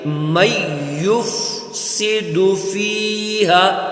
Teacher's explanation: ساکن ہے تو نون یہاں پر ساکن ہو جائے گا، یعنی نون ہم نہیں پڑھیں گے یہاں پہ، تو اس کو ہم میم کے ساتھ ملائیں گے ، من یفسد فیہا، اگر من یفسد پڑھیں گے تو غلط